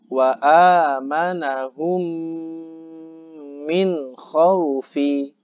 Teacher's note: Bunyi mim dimasukkan pada huruf mim di depannya seakan-akan huruf tersebut bertasydid ya. Dibaca gunnah dengan mendengungkan suara.